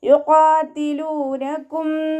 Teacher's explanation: യുഖാതിലൂനകും ഖാഫ് ഇസ്തിഅലാൻ്റെ ലെറ്ററാണ്. നാവിൻ്റെ ബാക്ക് മുകളിലേക്ക് പൊക്കി കൊടുക്കുക, തഫ്ഹീം ചെയ്യുക